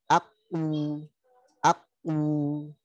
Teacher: Sekarang dhammah berarti dia tebal. Monyongnya membulat. Di sini bergetar bibirnya ujungnya.